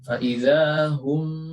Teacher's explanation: memasukkan mim pertama ke dalam mim kedua dengan merapatkan bibir dan menahannya selama 3 harokat. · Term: idgham mislain